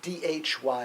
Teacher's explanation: aspirated D followed by a y so dhy